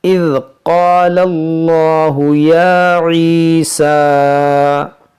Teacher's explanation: اس میں جلالت اللہ عز و جل کے لام سے پہلے زبر ہے، تو اس اللہ کے لام کو ہم موٹا کریں گے